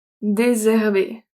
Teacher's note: The S and H in French don't make a sh sound. It's désherber.